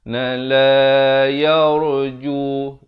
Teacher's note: La yarju, la dibacakan 2 harakat. Ro-nya dibaca tebal.